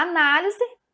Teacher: aqui na análise, o na é a sílaba tônica desta palavra